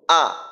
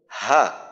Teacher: হামজার উচ্চারণ হলো হলকের শুরুর নিচের অংশ থেকে, আর হায়ের উচ্চারণ হলো হলকের শুরুর উপরের অংশ থেকে।